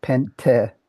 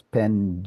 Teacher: As for Greek, it shows NT to ND as a key phonological development from classical Greek into the modern language. As in the word for five that I just mentioned, where ancient Greek had pente with a t and modern Greek has pend with a du or pde with uh no nasal.